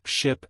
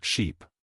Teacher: in ship the vowel is shorter while in sheep the vowel is longer